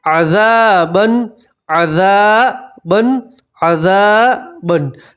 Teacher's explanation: ذال کے ساتھ الف مدہ اس لیے آپ ایک الف کے برابر کھینچیں گے. ٹھیک ہے، 2 زبر کی تنوین کے اوپر آپ وقف کریں گے تو 2 زبر کی تنوین کو ایک زبر اور الف سے پڑھیں گے تو پڑھیں گے عذابا عذابا.